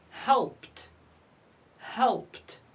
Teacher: We pronounce ed t because it's preceded by p.